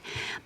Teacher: if you say shoe, your lips are getting ready for the oo, which requires more lip rounding, shoe. So you may start already with more rounding, shoe, she.